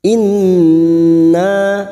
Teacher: nun yang bertasdid gunna musaddadah 3 harokat, kita dengungkan